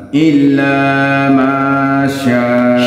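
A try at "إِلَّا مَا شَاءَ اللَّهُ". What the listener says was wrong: Sya. Enggak usah digentak.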